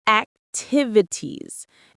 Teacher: The stress is on the second syllable. Tiv. Say it with me.